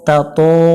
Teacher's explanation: তাতো, তাতো, জবরের বামে খালি আলিফ, এক আলিফ টানতে হবে এবং ত অক্ষর মোটা করে পড়তে হবে, এটা জবরে আকার পড়া যাবে না